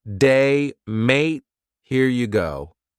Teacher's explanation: Rising intonation when your voice sort of goes up at the end · kind of going up at the end of a sentence